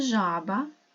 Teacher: це звук Ж твердий дзвінкий приголосний